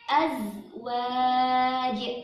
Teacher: Jim sukunnya jangan lupa dipantulkan karena jim sukun bagian dari huruf qalqalah